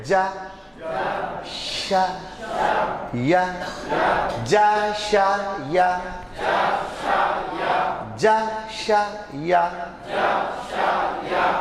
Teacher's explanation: تینوں کا مخرج تینوں کو نکلنے کی جگہ جیب کا بیچ حصہ ہے اور اوپر تالوں میں لگانا